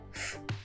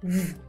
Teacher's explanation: Percebe que essa região vibra na produção do fonema V. Por isso, nós dizemos que o fonema V é sonoro, porque ele vibra as pregas vocais. Já o fonema F, não dá para sentir nada, não há vibração.